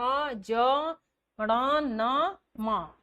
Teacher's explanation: ये शब्द बोलते समय हमारा जो प्रमुख हवा का जो प्रमुख अंश है वह नाक से निकलता है तो उसको बोलते हैं हम नासिक्य अब यहां क्या है नासिका होस्ट जीवा दंत दांत को दंत तालु ऐसे चित्र बनाए गए हैं ताकि आपको कहीं भी समझने में दिक्कत ना हो।